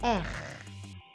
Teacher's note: Itu seperti ada air liur di pangkal lidah. Jadi anak tekaknya digoyang-goyang.